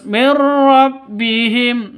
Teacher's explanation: nun mati bertemu dengan ro cara bacanya masuk ke ro tanpa dengung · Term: idgham Bila Ghunnah